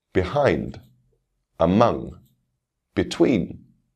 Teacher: Again, stress on the second syllable.